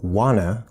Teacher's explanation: we have wanna, which is a reduction of want and to combined. The T is disappearing, which is a connection rule, but notice we keep the from t, wanna.